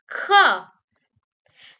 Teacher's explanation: The second consonant is kha. You will add a breath to ka, it will become kha.